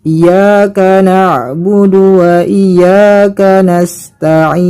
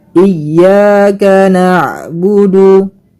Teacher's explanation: Yang seperti ini salah ya teman-teman. Yang benar ialah kita mentasydidkan huruf ya-nya.